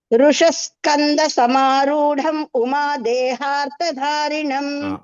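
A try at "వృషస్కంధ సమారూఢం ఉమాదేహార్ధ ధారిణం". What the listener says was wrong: ఈ మూడు మహా ధారిణంలో కూడా ధ మహాప్రాణం మళ్ళీ ఒకసారి చెప్పండి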